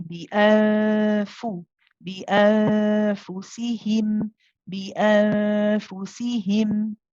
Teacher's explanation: because the next letter is a fa, which is a light letter, it's with a light gunna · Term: ikhfa, haqiqi